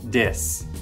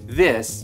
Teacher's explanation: what I see here in Korea is that the th becomes what English speakers would recognize as a d